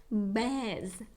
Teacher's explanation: це е польський яке читається як є але це широке е щоб його вимовити треба дуже широко відкрити рот